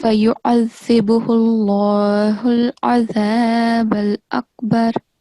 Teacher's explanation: make sure that you thicken the sound of lam